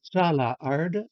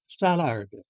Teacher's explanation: the thematic vowel disappears when arde or ardi appears